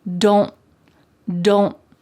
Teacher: My tongue is at the top of my mouth, like it's going to make that T shape, but I just don't let the air come out. Don't get, my tongue is stopped at the top of my mouth. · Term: stopped T's